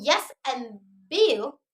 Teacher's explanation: And the second is yeah, as in yes and bill. Tongue raises to hard palate, but not too close, like palatal sound. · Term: approximations